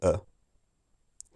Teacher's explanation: you see how the the tongue is very lax and central when you say uh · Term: more central